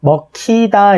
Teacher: 기역과 히읗이 더해지거나 히읗과 기역이 더해져서 전부 다 키읔이 된 형태다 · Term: 자음 축약